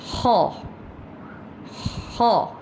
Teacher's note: خو کی آواز ہم جو ہے فرام دا تھروٹ نکالیں گے، یعنی کہ تھروٹ کے اوپر والے حصے سے